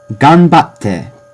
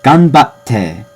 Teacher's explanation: Ganbatte has a little pause in that te. It's not just te, it's ganbatte. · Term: slight pause